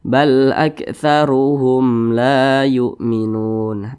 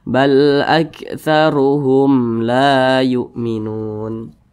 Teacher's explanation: Karena dia izhar maka dibaca jelas, tidak berdengung. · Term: izhar syafawi